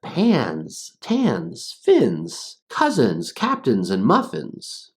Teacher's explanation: And that's right, that's the Z sound. Even though words end in NS, they're going to be pronounced NZ. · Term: NS ending sound